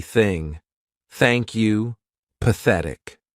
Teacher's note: the unvoiced TH sound, which means our vocal cords are not going to vibrate, so it's going to be thing.